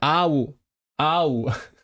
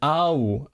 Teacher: High intonation on the first vowel especially by women. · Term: Lengthened high intonation